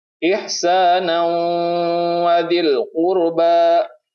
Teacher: Ihsanan wa dil qurba, ini hukum bacanya idgham biguna karena ada tanwin bertemu dengan huruf waw. Ya, ada huruf yang berharokah fathatain bertemu dengan huruf waw, maka bacanya idgham biguna, yaitu dimasukkan ke idgham ke huruf wawnya dengan ditahan selama 2 harokah.